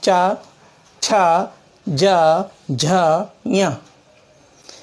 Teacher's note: कंठ के बाद आता है तालु। जीभ तालु से जब टकराती है, चिपकती है, तो चा वर्ग निकलता है